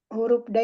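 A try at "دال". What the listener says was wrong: Dal. Huruf dal, bukan huruf da, huruf dal. Ya, dal sukun kolkolah dipantulkan karena dia di wasol atau di tengah maka namanya kolkolah sughra. Ya, kolkolah dibacanya dipantulkan. Kolkolah. Hukumnya kolkolah. Dipantulkan ya.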